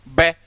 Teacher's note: लिप से पूरे मुंह को क्लोज कर लिया और फिर सडन पूरा खोल दिया, तो एयर मतलब फोर्स के साथ एनर्जी से रिलीज हो रही है। इसलिए शब्द प्लोजिव, प्लोजिया होता ना एक्सप्लोजिव या एक्सप्लोजन यानी विस्फोट होना।